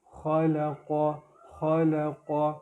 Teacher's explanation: الذي جیسے کہ یہ لفظ جو ہے پچھلی دو آیتوں میں بھی آ رہا ہے، تو اس میں ذال کا خیال رکھنا ہے، الذی نہیں کریں گے، الذی خلق، یہ لفظ پچھلی آیت میں بھی آیا تھا، خلق، خا کو پر کریں گے، موٹا کریں گے، لام نارمل، قاف پھر تھوڑا پر کریں گے